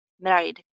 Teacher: First syllable stressed होगा और r sound पे भी focus करना है.